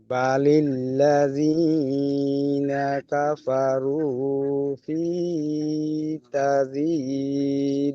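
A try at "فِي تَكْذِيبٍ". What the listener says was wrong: ফি তাজি নয়, ফি তাক, তা কাব সাবার তাক, তাটি কাবের সাথে যুক্ত হবে, কাবের উপর সাকিন। ফি তাকযীব।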